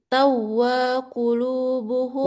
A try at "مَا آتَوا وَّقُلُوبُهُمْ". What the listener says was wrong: Wanya jangan panjang.